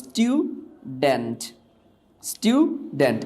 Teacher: এটাকে বলা হয় নন অ্যাসপারেটেড সাউন্ড